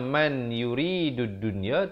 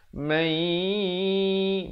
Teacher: Asalnya man yuridud dunya, tapi kena baca mai. Masuk beserta dengung dua harakat. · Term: idgham bi gunnah